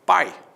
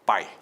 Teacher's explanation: existe portanto apenas uma vogal é lá pai o i é semivogal